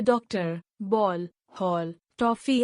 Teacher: अंग्रेजी की ओ ध्वनि हिंदी भाषा में आ गई है जो अ और ओ ध्वनि की मध्यवर्ती ध्वनि है